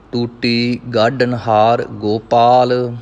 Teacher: ਟੂਟੀ ਗਾਢਨਹਾਰ ਢੱਡੇ ਦੇ ਨਾਲ ਥੋੜ੍ਹਾ ਜਿਹਾ ਭਾਰਾ ਹੋਵੇਗਾ, ਨੰਨਾ ਲਾਉਣਾ ਹੈ।